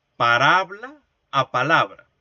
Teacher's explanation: Porque dos fonemas intercambiaron su posición.